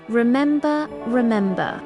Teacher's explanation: the word remember has three syllables. Remember, remember the stress is on the second syllable. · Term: word stress